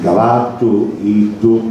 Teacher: Infatti se andiamo a guardare la cartina vediamo che per esempio nel territorio reggino la doppia L passa a doppia D capominale come nel siciliano standard, possiamo dire, quindi cavattu, iddu, quindi anche a palmi.